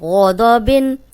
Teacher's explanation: غین بھی موٹا ہے، دود بھی موٹا ہے، دونوں موٹے حرف ہیں، اور صرف با جو ہے وہ باریک ہے